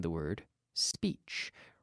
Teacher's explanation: Now be careful that you don't put an unnecessary vowel in front of the S in the word speech. Remember, the S sound comes from the mouth, blowing through the teeth, not in the vocal cords. There's no action, no activity in my vocal cords.